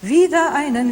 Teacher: It isn't wieder einen. You sing wieder einen, leave the R away.